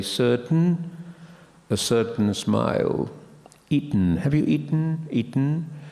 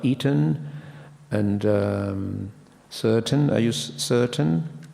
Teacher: A schwa between the two consonants, which is no longer there. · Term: syllabic